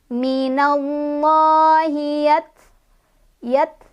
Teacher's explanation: Taknya punya sifat hamas, ada angin keluar ya.